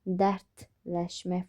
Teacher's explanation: Dərdləşmək formasında d t şəklində olacaq.